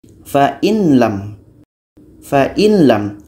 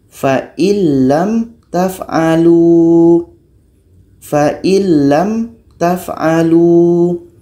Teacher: Nun mati ini masuk kepada lam. Kita baca fa'il lam taf'alu. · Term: idgham kamil